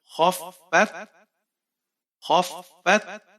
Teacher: فا کے اوپر شد ہے تو اس لیے ہم فا کو 2 دفعہ ادا کریں گے۔ ایک دفعہ خا کے ساتھ ملائیں گے اور دوسری دفعہ اس کی اپنی حالت سے پڑھیں گے۔